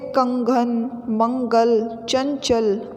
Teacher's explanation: अनुस्वार का उच्चारण नाक से होता है